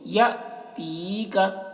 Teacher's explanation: ہے تو تا کو یا سے ملا کر پڑھیں گے، اور یا کو کھینچیں گے بھی ایک الف کے برابر کیونکہ یا مدہ بھی ہو رہا ہے